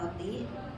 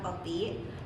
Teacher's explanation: penghilangan bunyi R di awal kata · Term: aferesis